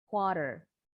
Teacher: Kalau orang Inggris R-nya nggak bunyi.